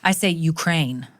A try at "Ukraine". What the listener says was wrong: you think the emphasis is on the second syllable? Well, it's not on the ain. It has a K.